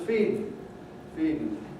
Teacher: when we have a T or a D before the ing, you can get a syllabic consonant